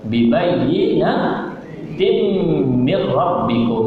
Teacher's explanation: cara bacaannya tanwin dimasukkan ke dalam mim serta didengungkan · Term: idgham ma'al ghunna